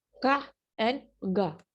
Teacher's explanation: जब हम का और गा साउंड प्रोड्यूस करते हैं, तो हमारी जो टंग है, बैक ऑफ द टंग जो है, वो जाके व्हीलम या सॉफ्ट पैले को टच करती है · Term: व्हीलर साउंड